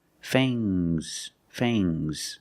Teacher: Use a long A plus the nasal sound, and a soft G.